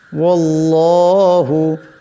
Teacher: আল্লাহ লামের ডাইনে জবর আসছে, আল্লাহ লামকে মোটা করিয়া পড়তে হবে